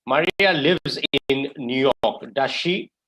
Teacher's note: we can use type 2 tags when we don't know if the answer is yes or no the intonation is usually a rising tone